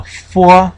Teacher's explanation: we're doing labio Dental which is a slightly different location of articulation specifically between the bottom lip and the top teeth and we're doing something called a fricative articulation so I'm going